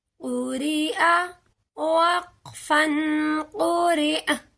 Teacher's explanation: اگر حمزہ آ جائے تو اس حرف کو لمبا نہیں کیا جائے گا، اس پر جھٹکا لگے گا